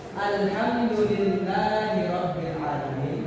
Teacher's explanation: Dalam contoh lain, lafaz alhamdulillahi rabbil alamin, huruf ra-nya itu juga dibaca tebal.